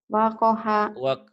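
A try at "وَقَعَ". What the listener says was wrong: Wakoha, salah. Wakoha. Itu bukan H. Itu segitiga tuh. Wakoa. Kalau wakoha kan segitiganya agak gede tuh. Ini agak kecil.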